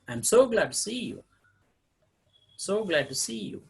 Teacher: it begins with middle and ends with low level